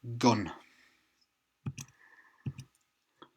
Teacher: It's G, G. It's really at the back of your throat